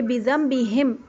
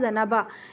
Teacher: نون کے فوراً بعد جب با جاتا ہے تو پھر ہم نون کو میم میں بدل دیتے ہیں